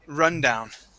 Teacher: the stress is at the very beginning of the word. Instead of run down, it is rundown.